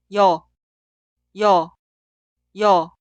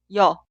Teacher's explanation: Vocal 여 se clasifica como vocal simple, pero fonéticamente es una vocal doble. El sonido inicial es i e instantáneamente termina con o. Cuidado, suena como un solo sonido, no dos sonidos separados y o.